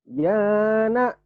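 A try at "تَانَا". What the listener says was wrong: Kok tanah, yana. Ini kan tanah. Kan sama tanah. Tanah, cuman beda panjang. Ini pendek semua, ini panjang. Tanah, ulang.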